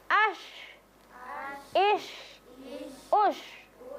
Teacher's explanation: Jadi huruf shin itu keluar dari tengah-tengah lidah. Ya, menempel tempat landasannya di atas langit-langit.